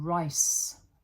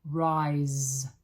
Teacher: Rice is no voice. Rise. You can hear the voice there. The vibration. If you put your finger there, you can feel.